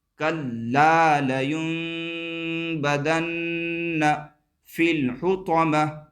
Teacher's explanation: نون ساکن کو میم سے بدل دیتے ہیں اور غنہ اور اخفا کے ساتھ پڑھتے ہیں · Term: اقلاب